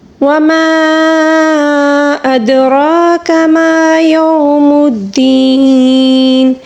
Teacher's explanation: وما یہاں پر مد منفصل ہے، اس کو 3 الف کے برابر کھینچ کر پڑھیں گے. ادراکا دال کے اوپر ساکن ہے، اس کو قلقلے کے ساتھ پڑھیں گے